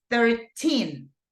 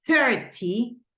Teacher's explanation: in this case, the stress goes in the teen. But whenever we say 30, the stress goes in the first syllable.